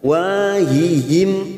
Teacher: wa fathah bertemu Alif dua harakat